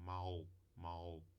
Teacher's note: além de se colocar a ponta da língua atrás dos dentes nos alvéolos Levanta a parte posterior da língua em direção ao véu palatina palato mole como se fosse fazer um u ou fazer um G fica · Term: L velarizado